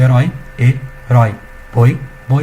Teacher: Decrescentes, pessoal, vogal mais semivogal na mesma sílaba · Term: ditongos